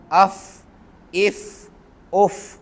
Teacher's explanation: ऊपर वाले जो दो दांत हैं सनाया उलिया जिन्हें हम कह रहे थे, वो नीचे वाले होंठ के अंदरूनी हिस्से से लगेंगे तो फ़ा अदा होगा। जिस तरह अफ़ इफ़ उफ़, अंदरूनी हिस्सा यानी गीला हिस्सा, जहाँ पे अंदर हर वक़्त मुंह में पानी रहता है।